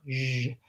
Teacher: So that's the one we talked about in words like version and measure, where it sounds like the SH sound, except my voice is on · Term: zh sound